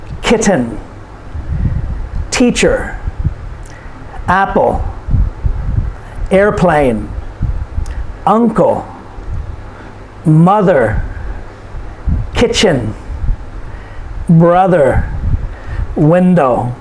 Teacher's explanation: these are two syllable nouns and the stress is put on the first syllable